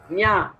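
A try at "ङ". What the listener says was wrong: Not nya. The tongue should not touch. Don't allow the tongue to touch.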